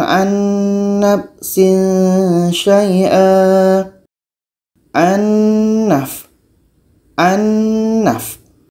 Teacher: jadi ini hukumnya idgam bhunah kita harus bacanya secara idgham Kamil harus masuk secara sempurna bunyi Nun masuk kepada bunyi Nun